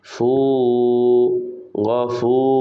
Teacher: মাদের হরফ, মাদ্দে তবাই। এক আলিফ টেনে পড়তে হয়।